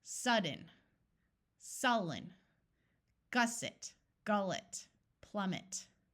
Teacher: in all of these words the first syllable is accented so the vowel in the middle is going to have its clear short sound